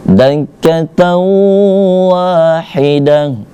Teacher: Nah, ini tamarbutonya berbaris fattatain, bertemu dengan waw, maka dia jatuhnya idgham bi gunnah, dibaca dengung, dan wawnya dibaca panjang karena ada alif di depan huruf waw, seperti itu.